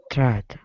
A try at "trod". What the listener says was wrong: great